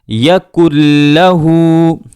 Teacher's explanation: نون ساکن اور تنوین کے بعد جب لفظ لام آتا ہے تو اس میں غنہ نہیں کیا جاتا ہے، آواز کو گنگنایا نہیں جاتا ہے